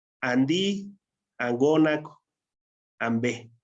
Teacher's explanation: la nasal hace que la siguiente consonante, que es una consonante sorda, se sonorice. Y por eso se escucha como ambé, angónac o andí. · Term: sonorización